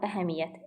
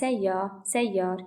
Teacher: Əgər sözdə qoşa y varsa, əsasən qoşa y-lar iyyə, iyya, iyyət, iyyat daxilində olarsa, bu zaman bir y ilə tələffüz olunur.